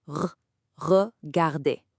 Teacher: It's not a hard R like in English. It's made in the back of your throat. Think of it as a really, really light gargle sound. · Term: French R